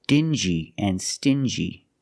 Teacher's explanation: These two words have the regular n sound, n, plus the j, like juice. Together, stin-g.